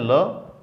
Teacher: तो जब हम ल बोलते हैं ल, तो जीबान ऊपर आ जाती है, हवा अवरुद्ध हो जाती है और हवा जीबान के आसपास से, जीबान के पार्श्व से, जीबान के बगल से बाहर आती है, इसलिए हम इसको पार्श्विक कहते हैं।